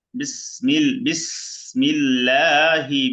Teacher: সিনতে বাতাস বের হবে সিনে সুন্দর করে বাতাস বের করতে হবে · লামটা পাতলা হবে এখানেও আল্লাহ শব্দ লামের ডান পাশে জের পাতলা হবে